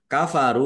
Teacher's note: rok domah wawu sukun mat tobi'i panjang dua harokat. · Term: mad thobi